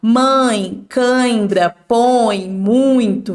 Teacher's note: o ditongo nasal, o ar vai sair tanto pela boca quanto pelo nariz. Se você fala mãe, cãibra, põe, muito, vejam, a hora que você vai falando vai saindo pelo nariz e pela boca, sem falar que eu consigo falar só pela boca.